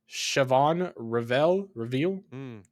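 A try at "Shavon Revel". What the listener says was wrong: No, the H is silent. Savon Revel.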